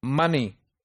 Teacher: stress is on the first syllable because second syllable has a weak syllable